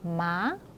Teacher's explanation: 올라가는 모양으로 이렇게 생겼죠. 그래서 가볍게 끝을 올려서 읽어주시면 되겠습니다. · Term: 두 번째 성조